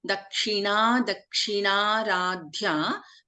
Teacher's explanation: Here Dha is a Mahaprana.